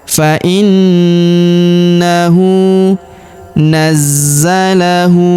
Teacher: Huruf hu kita panjangkan dua harakat karena berharakat U terbalik.